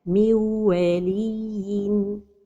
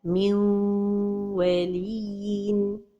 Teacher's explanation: So the right pronunciation is to give time to the غنة.